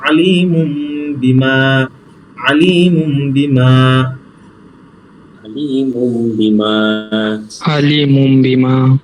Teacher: তানবিন টাকে আমরা মিম দ্বারা পরিবর্তন করব